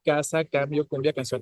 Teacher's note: hay un taponamiento, en este caso en la garganta de la columna del aire, y después se vuelve a abrir ese taponamiento y ya sale el aire · es un sonido oclusivo, obviamente sonido consonántico, ¿no? Que es oclusivo, que es velar, porque se produce, como les decía ayer, en el velo de la garganta, o sea, como desde la campanita, es ahí donde se cierra justo la garganta, entonces es velar, y sordo.